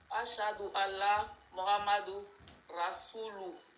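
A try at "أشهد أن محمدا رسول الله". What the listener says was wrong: Kana faut Muhammadu, il faut le Muhammada. Faut pas dire d'où c'est da.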